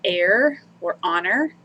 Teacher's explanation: the English word heir or honor you don't pronounce the H there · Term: silent H